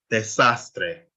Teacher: So you stress the second to last one, which is sas, and you stress the A. Remember, we only stress vowel, desastre.